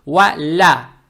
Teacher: Далее стоит буква лям с фатхой. Фатха приобретает оттенок я. То есть ва-ля.